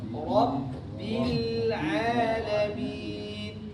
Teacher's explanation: Rabbil Ra-nya tebal, ba-nya tipis.